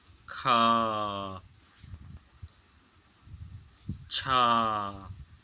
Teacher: चलते हैं हम यहां लिखते हैं और हवा निकलने हवा निकलती है और उसके उच्चारण में हकार की ध्वनि विशेष रूप से सुनाई देती है। हकार मतलब हारने की आवाज सुनाई देती है। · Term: महाप्राण